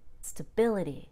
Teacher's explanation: we would spend a long time stretching out that a but when it's a noun we reduce that a